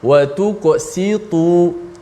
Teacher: Kalau kita tebalkan sin juga terpengaruh dengan sebelum tu qaf yang tebal, maka sin akan jadi sad. Kemudian bila kita nipiskan sin wa tuqsitu, kemudian ta di selepas sin tu mesti ditebalkan. Jangan kita nipiskan ta.